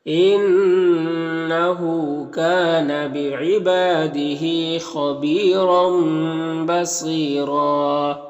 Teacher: اس تنوین کے بعد با ہے تو تنوین کو اس میم سے بدل کر غنہ اور اخفا کے ساتھ میں پڑھیں گے · را میں 2 زبر ہے، یہاں پر وقف کریں گے تو ایک زبر کے ساتھ الف پڑھیں گے اور را کو پر پڑھیں گے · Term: اقلاب